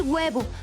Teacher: no pronunciamos una H fuerte al inicio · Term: La H es muda